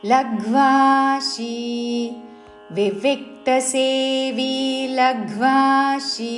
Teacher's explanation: చివరిలో తాళవ్య షీ దీర్ఘముతో